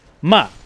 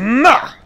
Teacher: There's the falling tone, which is like ma, like you're mad at something.